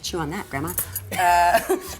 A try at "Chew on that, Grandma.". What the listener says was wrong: Where the comma is. You need to know where the comma is.